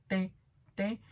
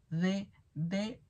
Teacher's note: las dentales, con la punta de la lengua contra el paladar anterior, que sería la T, T, T, y sería también la D, D, D y la N, N, N.